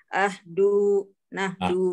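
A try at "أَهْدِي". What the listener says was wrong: Ahdi, itu dapat dari mana du itu? Ahdi, nahdi.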